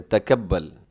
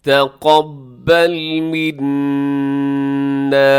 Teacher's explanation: اب قاف موٹا پڑھا جاتا ہے ہمیشہ، اسے تکبل نہیں پڑھنا آپ نے، تکبل، بلکہ آپ نے کیا پڑھنا ہے جی، تقبل منا.